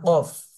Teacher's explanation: কফ, গলার মাঝখান থেকে উচ্চারণ করব